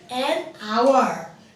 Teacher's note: when we speak an hour, here H is not spoken. Here we say hour.